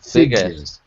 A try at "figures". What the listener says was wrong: Oh, I see. You're missing the EU. So figure.